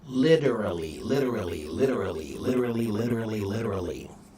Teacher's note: lit with a hard T, but many words the hard T when you speed it up, it will become a soft D.